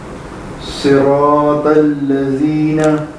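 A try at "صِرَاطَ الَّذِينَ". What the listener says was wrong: ہاں زال تھوڑا سا اور بہتر کیجیے گا. صراط الذین. ہاں سختی نہیں, زبان پہلے باہر نکالنی ہے پھر آواز نکالنی ہے.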